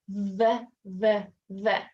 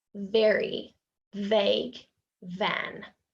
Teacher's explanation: for the V our teeth need to touch our bottom lip vvv and it should vibrate in here